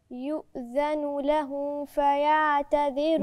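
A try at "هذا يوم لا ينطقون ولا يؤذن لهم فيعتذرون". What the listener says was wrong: برضو الميم مش باينه. لهم فاء، خلي بالك الميم والفاء، ما فاء الاثنين فيهم قرب، لازم اظهر الميم صح، لاما هتتاكل وسط الفاء لانهم الاثنين من الشفاء، ميم فاء، فخلي بالي وانا بنطقهم اظهر الميم عشان ما تتاكلش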